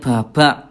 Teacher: Huruf ba tidak ada udara ya.